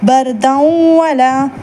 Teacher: So நூன் சுக்கூன் பெற்றதுனால நம்ம அதை வந்து நூன் சாக்கினை விட்டுட்டு ஃபமன் யஅமல் பர்தன் வலா, பர்தன் வலா, பர்தன்னு நம்ம படிக்கல, அங்கே தன்வீன் கொடுத்துருக்காங்க, அன்சவுண்டை விட்டுட்டு பர்தன் வலா அப்படின்னு சொல்கிறோம். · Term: பில் குன்னா